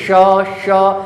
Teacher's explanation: बीच वाले तालु का प्रयोग किया जा रहा है, ठीक है। उसी बीच वाले तालु को बोलते हैं मूर्धा बोलते हैं। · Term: मूर्धन्य श